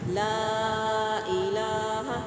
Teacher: ला पे मद्दे मुफ़स्सिल अप्लाई हो रही है। 3 से 4 हरकत हमने इसको खींच के लंबा करके अदा करना है।